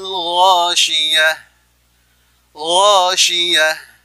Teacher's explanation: huruf ta marbuthah yang ketika diwaqafkan menjadi ha besar, maka ada sifat hamasnya · dia adalah sifat huruf isti'la, dibaca tebal, ya, tenggorokan bagian atas dengan huruf kha